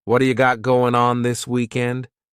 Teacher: It's called a flapped T and it just rolls off your tongue in a smooth way.